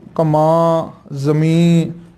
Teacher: ਕਮਾ, ਜ਼ਮੀ ਐ ਲਮਕਾ ਕੇ ਪੜਾਉਣੇ ਆ ਵੀ ਉਹ ਬਿੰਦੀ ਚੋਂ ਅੱਧਾ ਨੰਨਾ ਬੁਲਾਉਣਾ ਹੁੰਦਾ ਹੈ